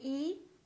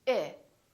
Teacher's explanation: we don't say e we say it very neutral very relaxed